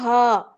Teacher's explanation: ہا ادا ہوگا بالکل سینے کے حصے سے. ہا جیسے ہم کہتے ہیں ہا یہ کیا ہو گیا ہا, اس طرح یہ ہوگا ہا.